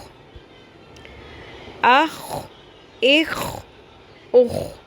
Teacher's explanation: اس میں خراش کی آواز واضح ہونی چاہیے